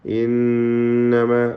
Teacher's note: ഇന്നമ എന്ന് ചേർത്തോതാവുന്നതാണ്, എന്നാൽ വഖഫ് ചെയ്യലാണ് ഉത്തമം. ഇന്നമ നൂൻ മുഷദ്ദദ മണിക്കണം, ഷദ്ദ നൽകപ്പെട്ട നൂൻ